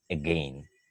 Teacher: when we pronounce again we barely hear the beginning · sound in the language therefore it has been given a name it is called schwa it is a very short sound